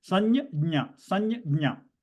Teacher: So the anuswara will become the nasal version of the ja group.